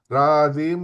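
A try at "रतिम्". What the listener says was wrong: Not ratim, but radim.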